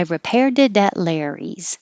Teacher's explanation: the t in it changes to a d and connects to the a